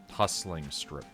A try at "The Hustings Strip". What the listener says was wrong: Hustings. There's no L. Suhusting. Hustings.